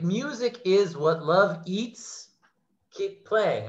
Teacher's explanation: the word playing by itself, 2 syllables, and we stress the first syllable. So instead, we get 2 stressed syllables together.